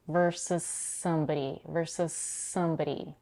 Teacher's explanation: she merges the final consonant s in versus with the next word that starts with the same s. The merged s becomes longer.